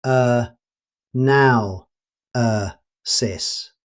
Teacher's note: Notice that the stress falls on now.